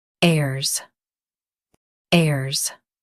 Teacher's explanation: Focus on air and make it smooth. The H is silent.